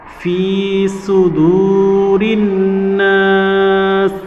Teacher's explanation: সুদু, রনুদের ঋণ, নুন আলিফ জবর না চেঞ্জ হয়েছে, এখানে নুনের তাজদিদ আছে এবং নুনের পরে খালি আলিফ, জবরের পরে খালি আলিফ মাদের হরফ, এবং মাদের হরফের পরে সিন হরফে আমরা ওয়াকফ করছি, যার কারণে এখানেও মাদে আরজি হবে, 3 আলিফ টেনে পড়তে হবে।